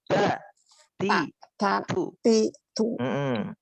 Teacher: Jadi jangan nempelnya itu jangan di gigi. Tapi nempelnya di gusi. Ta. Di gusi. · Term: huruf ta